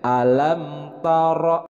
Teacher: Nah, dalam lafaz alam itu hamzah dibacanya jelas dari aqsal halqi atau dari pangkal tenggorokan